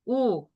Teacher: 입이 앞으로 나온 채로 끝나지?